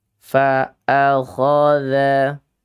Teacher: Kesalahan yang fatal karena dha dibacanya da.